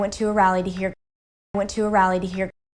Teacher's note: it's definitely not two to two there's no true t and there's no u vowel it's more of a flap t and then the vowel is the schwa